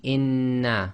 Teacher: the sound of the second noon comes directly out without taking a pause or breaking the sound